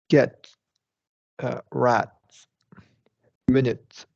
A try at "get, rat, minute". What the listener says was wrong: And here it sounds like a little with the T sounds a little bit uh shortened. So you want to get And what I'm saying is you don't have to hold it right for a full, but you want to fully articulate it.